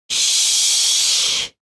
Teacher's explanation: you should try to place your tongue higher and more forward in the mouth than in English.